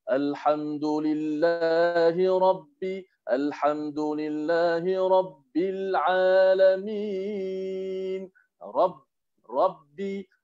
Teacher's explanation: Kalau kita terlalu cepat ambil B dengan tasydid tu, jadi macam seakan-akan kita meringankan sedikit ba. Tapi masih ada tasydidnya.